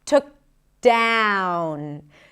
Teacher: Then we connect the k to the D, took down.